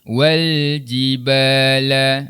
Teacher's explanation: huruf lam ni dia tidak bersifat qalqalah. Maka jangan dilantunkan. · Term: alif lam qamariyah